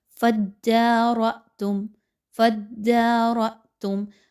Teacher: حمزہ کے اوپر جزم کی علامت ہے، حمزہ کو جھٹکا دے کر پڑھا جائے گا۔